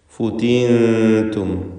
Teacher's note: ഈ പദത്തിൽ സാക്കിനത്തായ നൂനിന് ഇഖ്ഫാ ഹഖീഖി നൽകി അവ്യക്തമാക്കി മണിക്കണം